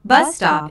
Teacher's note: bus stop is a compound noun with the main stress on the first word